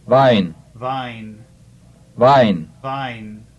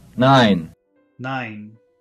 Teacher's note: the duration of the German vowel combination is considerably shorter than the English